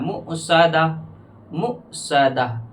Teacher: واو نہیں پڑھا جاتا ہے، تو لہٰذا یہاں پر تھوڑا جھٹکے سے پڑھنا ہے